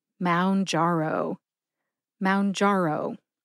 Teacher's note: Emphasize jar and O. See if you can hear that emphasis when I say it slowly.